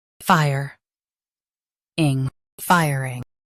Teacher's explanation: Stress fire and keep ing soft.